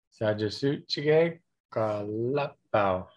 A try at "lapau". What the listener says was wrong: And it's not lapau, but lapau. Lapau. And It ends with a glottal stop. Lapau.